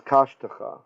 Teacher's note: In this case, kashtecha, the second schwa lengthens to a segol.